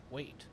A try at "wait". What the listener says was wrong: No. You're not putting enough emphasis on wait.